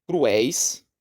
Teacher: tem o iato entre o u e o e e tem o ditongo decrescente éis